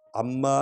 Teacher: اما اس لیے پڑھا ہے، اس کو لمبا کیا ہے کیونکہ الف پر مد ہے، اور میم کو 2 بار پڑھنا ہے کیونکہ شد ہے